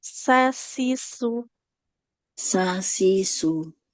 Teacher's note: Kalau sin ujung lidah ke ujung gigi seri bawah.